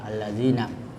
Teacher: Ya, jadi ada dua lam di situ. Lam pertama tidak dibaca, kemudian lam kedua dibaca pakai tasdid, ya, allazina. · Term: lam syamsiyah